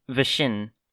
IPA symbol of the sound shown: βɕn̩